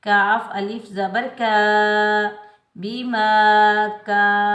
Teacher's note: اس کاف کو ہم باریک پڑھیں گے